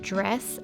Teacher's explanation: When I say the word dress out loud, they are right. It starts with something that sounds very much like J and not D.